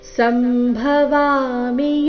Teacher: ಸಂಭವಾಮಿ ನಲ್ಲಿ ಭ ಮಹಾಪ್ರಾಣ ರಸ್ವ ಬರಬೇಕು.